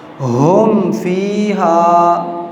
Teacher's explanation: اب یہاں پر بھی کیا ہو رہا ہے، اظہار ہو رہا ہے، آواز ناک میں نہیں جا رہی